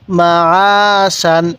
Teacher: আইনটা উচ্চারণের সময় গলার মধ্যে হালকা চাপ দিলে আইনটা সহি উচ্চারণ হবে